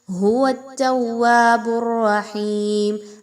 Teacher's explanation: اب اس میں دیکھیے تو تا، واو اور آگے پھر را پر تشدید ہے. واو کو آپ نے تا کے ساتھ ملاتے ہوئے اور تا کو دوبارہ سے اگلی واو کے ساتھ ملاتے ہوئے مضبوطی کے ساتھ ملانا ہے